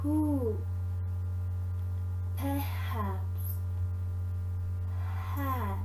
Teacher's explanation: are made by moving the vocal cords close to one another english has a voiceless glottal fricative